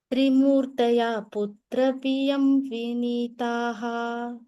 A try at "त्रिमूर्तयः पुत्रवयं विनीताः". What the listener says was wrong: पियम இல்லடா वयं.